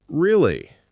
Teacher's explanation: If I say really with a flat voice, really, it sounds like I'm bored, like I don't care.